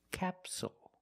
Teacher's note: the stress is on the first syllable so the second syllable is short it's not capsule it's capsule with a dark L at the · first syllable so the second syllable is short it's not capsule it's capsule with a dark L at the end